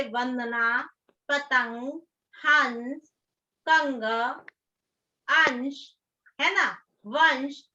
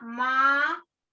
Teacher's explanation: अनुस्वार और अनुनासिक में उच्चारण में भिन्नता है। अनुस्वार का उच्चारण वायु नाक से निकलती है, जबकि अनुनासिक की नाक और मुंह दोनों से निकलती है। जैसे अनुस्वार में क्या है, अंग की बिंदी लगानी है, जैसे वंदना, पतंग, हंस, कंग, अंश, है ना, वंश।